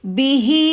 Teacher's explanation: پھر بی چھوٹی آواز ہے اور ہی لمبی آواز ہے، تو اس کو لمبا رکھیں گی، ڈبل رکھیں گی، ڈبل صرف، ٹھیک ہے، زیادہ لمبا نہیں۔